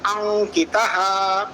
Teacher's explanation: Hence, Anuswara is an Anunasika letter, nasal sound. That's why the nasal sound of Kavargaha, Nakara, will replace the Anuswara